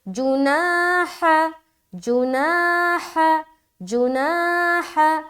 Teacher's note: اس کے بعد جناح، جیم پیش جو، نون الف زبر نا، الف مدہ، ہا زبر ہا، ہا کی ادائیگی کرے سینے کی طرف سے